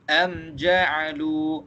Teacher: Mim mati bertemu dengan sin, kita baca dia jelas dan tak ada dengung. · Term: izhar syafawi